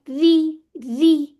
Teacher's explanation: जब हम कसरा आ जाती है ना तो ये तकरीर इतनी ज्यादा वाजे नहीं होती, होती है उसके अंदर लेकिन इतनी वाजे नहीं होती, ठीक है? रॉ फथा रॉ, रॉ कसरा री, री, ठीक है? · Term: बारीक रॉरी